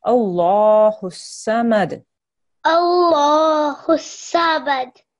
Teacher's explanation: when you're saying Allah, you make your mouth into a round shape and you make that into a thick sound as well.